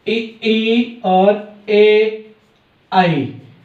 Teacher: ये आपके अग्र स्वर होते हैं जो आगे से बोले जाते हैं।